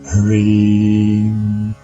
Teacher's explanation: the vowel in this mantra is a long vowel and is sounded as in the English word free.